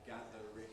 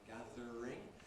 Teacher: That’s a candidate for ‘syllabic consonant formation’ like ‘gathering’ /ˈgæðərɪŋ/ becoming /ˈgæðr̩ɪŋ/